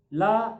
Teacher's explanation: जिह्वा का आगे का भाग दांतों से लगता है। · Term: दंत्य वर्ण